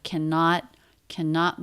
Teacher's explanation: two syllable word stress on the second syllable